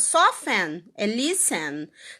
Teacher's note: Você não pronuncia o T, tá? Soften, que é suavizar em inglês, é listen, que é escutar em inglês. O T continua sendo mudo. A gente ainda mantém o T silencioso.